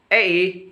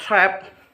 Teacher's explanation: low when the tongue moves downward to a low position